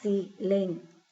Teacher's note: Tenemos aquí la palabra silenciador, la divido en sílabas, silenciador. La sílaba tónica aquí es dor, ahí es donde suena más fuerte. Quiere decir que si esa es la sílaba tónica, la palabra es aguda.